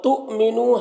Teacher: نو میں واو مدہ ہے، ایک الف کے برابر کھینچ کر پڑھیں گے۔